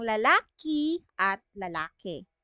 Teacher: kahit na nagpalitan na yung titik I at titik e so yun yung tinatawag nating allophone